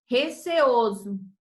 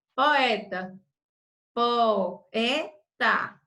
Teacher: o hiato, que é o encontro de 2 vogais pronunciadas em sílabas separadas